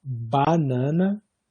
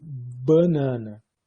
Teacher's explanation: Veja que no caso de banana, esse cara aqui vai ser sempre vai ser sempre nasalizado, mas a primeira, a vogal da sílaba pré-tônica, pode ou não ter a nasalização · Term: nasalização antecipatória